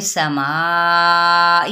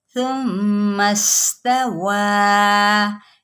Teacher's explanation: सीन की सीटी को वाज़े करें, सा पे नरमी से, सा पे कोई सीटी नहीं है